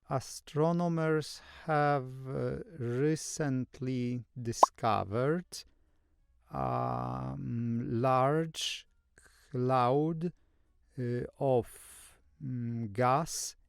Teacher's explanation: secondly the speaker doesn't use sentence stress · firstly the speaker doesn't use much intonation